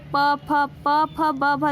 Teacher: प, फ, ब, भ, जब भी बोलते हैं प वर्ग के जितने भी व्यंजन हैं वो सभी होठों से बोले जाते हैं, यानी ऊपर के होठ और नीचे के होठ टच होते हैं आपस में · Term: ओष्ठम